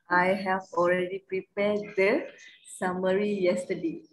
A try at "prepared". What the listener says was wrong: Bukan the. Dia prepare tu ada D. I have already prepared.